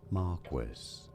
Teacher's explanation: this is said as Marquest stress on that first syllable